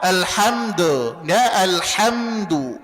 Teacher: Kemudian dalnya dhammah, maka monyongkan kedua bibir, jangan dibaca do.